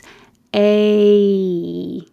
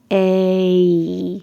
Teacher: A. You start with kind of flat and your jaw rather in the middle. A, and then it rises.